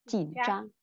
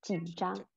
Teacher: Xuống lên rất là nhanh thôi. Chỉn trang. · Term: thanh ba